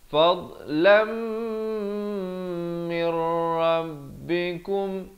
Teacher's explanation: idgham bila gunnah, daripada min rabbikum jadi mir rabbikum